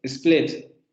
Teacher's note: Está entre una I y nuestra E. Por eso es media cerrada.